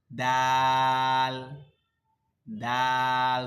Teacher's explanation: মাখরাজ হলো, স্থান হলো জিহ্বার আগা, দাঁতের গোড়া।